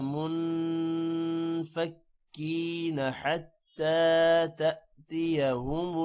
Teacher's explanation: نون پر غنہ ہوگا اور حتی لمبا ہوگا کیونکہ کھڑی زبر ہے، تھوڑا سا لمبا ہوگا